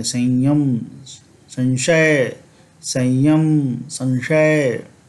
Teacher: उसी तरह से य अथवा श जब रहेगा, यकार और तालव्य श रहेगा, तो हम लोग य के समान करेंगे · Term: अनुस्वार का उच्चारण